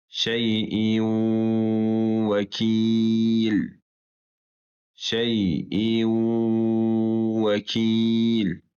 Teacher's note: Bu dörd hərf sakin nundan və ya tənvindən sonra gələrsə, nun oxunmayacaq və özündən sonrakı hərf şəddəli və iki hərəkə miqdarı olaraq oxunacaqdır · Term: idğam məəlunə